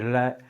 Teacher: जिह्वा और हवा बगलों से निकलती है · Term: पार्श्विक व्यंजन